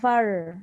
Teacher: Faru, bukan far. Far tu lidah kita tak bergetar tau. Dia bengkok ke atas tapi tak bergetar.